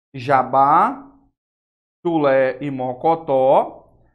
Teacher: todas são oxítonas sim por quê Porque a sílaba forte é a última